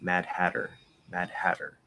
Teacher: we kind of tend to maybe linger on that d just a little bit to kind of make it solid before we release it um and then really push out that